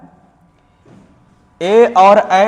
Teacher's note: ए और ऐ का जो उच्चारण स्थान होता है वह कंठ और तालु दोनों होता है। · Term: कंठ तालव्य वर्ण